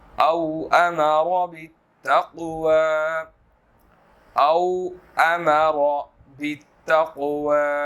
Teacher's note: امر اس کے اندر جو ہے وہ را موٹی ہے، اور بالتقوى قاف جو ہے وہ اس کو ہم موٹا ادا کریں گے